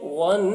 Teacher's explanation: نون میں غنہ کریں گے تھوڑی دیر تک